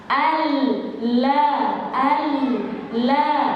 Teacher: sifat al-inhiraf itu yang miring suaranya, aliran suara, bukan lidah, posisi lidahnya dimiringkan, bukan.